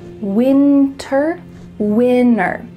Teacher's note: Internet, winner. Yeah, we're cutting out that T, especially when there's an NT in the middle of a word.